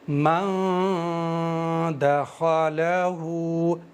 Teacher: इस नून को जब मैं अदा करूंगा, तो नाक में छुपा कर के अदा करूंगा और जबान को हवा में रखूंगा। जैसे मन दखलहु अभी मैंने ज़बान को तालों पर या मसूड़ों पर कहीं भी नहीं लगाया है। · जबान को हवा में रख करके पढ़ेंगे, यानी जबान कहीं भी टच नहीं होनी चाहिए जब हम इख्फा कर रहे हों। जबान को दांतों पर नहीं लगाना है, तालू पर नहीं लगाना है, जब हम इख्फा कर रहे हैं हवा में होनी चाहिए, और नाक से अदा करना है गुनगुनाते हुए इस वाले नून को। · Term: इफा